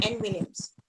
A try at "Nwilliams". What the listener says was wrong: Williams. My N is silent.